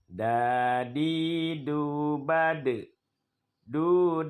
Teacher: makhrajnya tempat terbit hurufnya yaitu ujung lidah kita menyentuh dengan urat gigi atas artinya dinding gigi bagian dalam gigi seri Dau DII kita baca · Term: huruf Dal